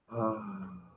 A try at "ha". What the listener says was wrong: Ha. Air through your cords. Now that's not air through your cords. That is your cords closing together.